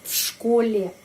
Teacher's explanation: Karena huruf sh voiceless, ya, tidak ada suara. Karena itu V pengucapannya V, в школе.